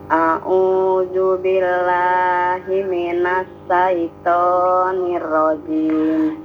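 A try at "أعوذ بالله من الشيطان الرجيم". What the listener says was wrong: Ya, Ibu, huruf za dan sya. A'udzu, zu ujung lidah ya. Zu. Terus kemudian sya, SYA, minasyaiton.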